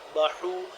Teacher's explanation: حا حلق کے درمیانی حصے سے